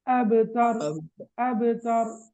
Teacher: கல்கலா சூரா சிறிய அளவிலான ஒரு அசைவை ஏற்படுத்துறது